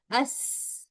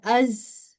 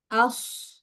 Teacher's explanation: जब जब ये अपने मखरज से अदा हो रहे होते हैं वहीं पर सीटी की आवाज भी आती है। जैसे कि अस ये सीन की आवाज है।